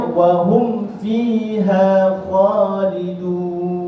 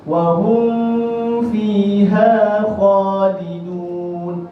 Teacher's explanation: kebanyakan mereka apabila baca tanpa berhati-hati, dia membaca dengan memasukkan mim ke dalam huruf selepasnya